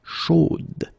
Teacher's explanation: You will have to put this final e, chaude, okay, at the end, and then the pronunciation will change a little bit, chaude. So here you pronounce the final d, whereas in the masculine form you don't pronounce it.